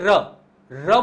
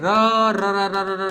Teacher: જીભમાં કંપન ઉત્પન્ન થાય તેવા પ્રકંપી વ્યંજનો કહેવામાં આવે એટલે કે તમે બોલોને તો જીભ ની અંદર કંપન ઉત્પન્ન થાય જેમ કે ર ર બોલશો ને તો આમ આમ ખેંચાતું હોય